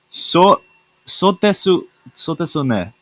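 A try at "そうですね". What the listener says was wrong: So desu ne. You don't have to pronounce the U.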